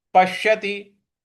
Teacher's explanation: श पर हमें बल लगाना है